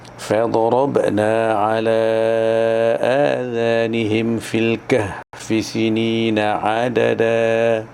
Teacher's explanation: فضربنا, ba huruf qalqalah, kena ada lantunan.